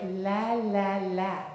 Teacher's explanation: So as opposed to going la like we might in English with the tongue on the teeth in Arabic the tongue is a little behind the teeth up on the pallet sort of sweet and juicy and flattened a little bit and it's more like la. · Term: sweet L